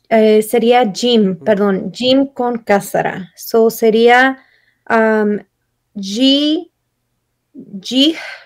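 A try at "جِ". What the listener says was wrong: Muy bien.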